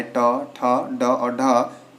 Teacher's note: तो जो आपका टवर्ग होता है उसका उच्चारण स्थान क्या होता है? मूर्धा होता है।